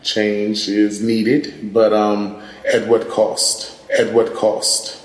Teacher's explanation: Another feature that we see in DC, similar to New York, is the raised cloth vowel.